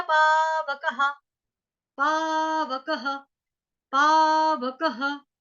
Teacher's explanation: क के बाद विसर्ग आ गया तो यहाँ पे उच्चारण होगा ह, ह।